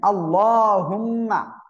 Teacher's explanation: আল্লাহ শব্দের লাম মোটা হবে, ওয়াজিব গুণা হবে এখানে